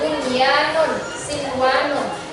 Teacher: Izhar ilmi ini adalah nun mati bertemu dengan salah satu dari huruf idgham yang 6 tadi ya, yang nun, mim, waw, lam, dan ro, tapi dia masih dalam satu lafaz. Makanya dia tetap dibaca jelas.